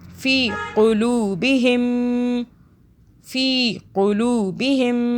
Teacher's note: या यहाँ पे क्या हो रही है, फ़ी, फ़ाज़िर फ़ी होता है ना, तो हम या की वजह से हम फ़ाज़िर फ़ी पढ़ रहे हैं, फ़ी थोड़ा सा एक अलिफ के बराबर खींच रहे हैं, तो या मद्दा हो रही है।